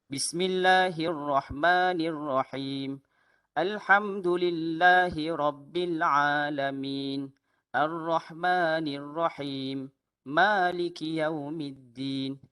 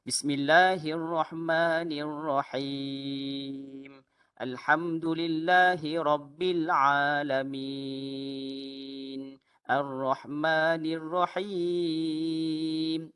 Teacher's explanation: Mad arid li sukun kita boleh baca 2, boleh baca 4, boleh baca 6. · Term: dua harakat